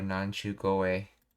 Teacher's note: the k of koi to be voiced into goi · The voicing of K to G often makes the word sound softer, more integrated into the preceding phrase